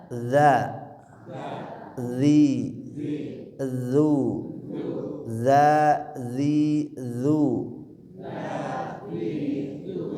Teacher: Pastikan ujung lidah ke ujung gigi seri atas. Suaranya mengalir, bukan nafas. Ya, bukan udara tapi suara bunyi. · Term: huruf zal